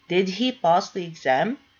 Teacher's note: It starts with the auxiliary did. It has a rising intonation.